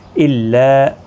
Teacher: لا الف مدہ ہے، ایک الف کی مقدار کے برابر کھینچیں گے